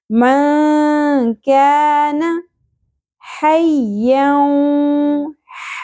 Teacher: عربی زبان میں یہ حا ہے وسط حلق سے ادا کرنا ہے